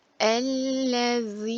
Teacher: Z'nin Peltek olduğunu bilelim dilimizin ucunu hafif ısırarak çıkarıyoruz ve burada bir çeker var Uzatma var uzatarak okuyoruz eline yun